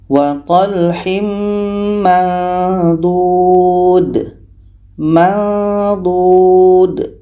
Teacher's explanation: bunyinya samar mendekati tempat keluar huruf d